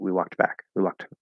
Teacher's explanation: hit a really quick K and T, because obviously that T sound indicates that it's going to be the past tense